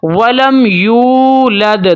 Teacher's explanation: یہاں پر یا کو لمبا کر کے پڑھیں گے ایک الف تک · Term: واو مدہ